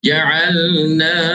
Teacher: Ja'alnakum, juga ma asli panjang 2 harakat. Izhar syafawi, bacaan jelas tanpa dengung